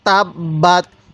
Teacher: আমরা বা টা কিন্তু দুইবার উচ্চারণ করব কারণ বা এর উপরে তাসদিদ আর এই তার উপরে সাকিন এই তা আমরা একবার উচ্চারণ করব